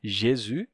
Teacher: o s final fica mudo